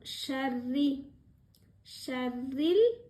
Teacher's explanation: ரா கசரா இருக்கிறதுனால சாஃப்டாக சொல்லணும்